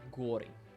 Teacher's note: turns out it's on the second syllable